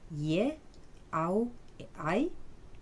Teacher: les voyelles simples E, A et la ligature E se sont développées, sont devenues des diphtongues prononcés ye, au et ai